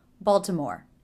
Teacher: Stress is on the first syllable, so that should be the longest. After the stressed syllable, the voice will come down in volume and pitch, so the last syllable, more, will be quick, low in pitch, and low in volume.